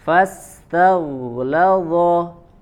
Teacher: huruf ghainnya alirkan suaranya karena dia memiliki sifat rakhawah.